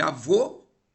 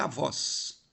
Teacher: Avô tem o O fechado e avós tem o O aberto